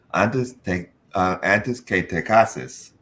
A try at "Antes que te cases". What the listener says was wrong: No antes. Antes is English. Remember your vowels. Antes.